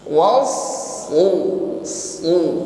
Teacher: Lalu kita nabrah saja, ditekan pada huruf shad yang bertasydid, was su. Jadi huruf shad di sini sifatnya isti'la, bunyinya selalu tebal ya. Isti'la itu irti'adul lisan ilal hanakil a'la, terangkatnya pangkal lidah ketika mengucapkan huruf shad.